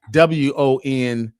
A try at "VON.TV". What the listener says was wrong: You said WON. Let's get it right. It's VON.